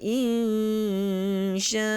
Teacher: mad jaiz boleh kita baca dengan 6 harakat